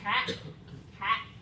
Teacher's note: near open middle front vowel.